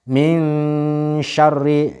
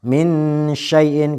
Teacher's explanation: Kemudian setelah nun yang sukun itu huruf bertemu dengan salah satu dari huruf yang 15 tadi, maka bunyi dari minnya itu akan samar. Bunyinya jadi samar atau menyamarkan begitu. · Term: hukum bacaan ikhfa